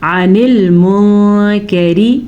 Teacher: عن المنکر, پھر نون ساکن کے بعد کاف آیا ہے جو کہ حروف اخفا میں سے ہے تو میں نے نون کو چھپا کے پڑھا ہے